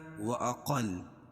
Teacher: وأقل قاف کو موٹا اور لام پر تشدید ہے